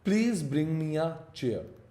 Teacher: Please is stressed to show politeness or emphasize